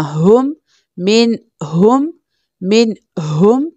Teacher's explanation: मीम नून कसरा मिन, again यहाँ पर हम इजहार करेंगे बिकॉज नून साकिन के बाद नेक्स्ट लेटर हा है जो कि हल्की लेटर है यानी थ्रोट लेटर है तो यहाँ पर हम बगैर गुन्ना किए पढ़ेंगे · ये जो हा है ये lower part of the throat से प्रोनाउंस होती है, आर्टिकुलेशन इसका lower part of the throat है यानी मोटी हा है